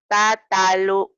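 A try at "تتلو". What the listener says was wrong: Panjang ujungnya. Ini pendek karena ketemu huruf mati.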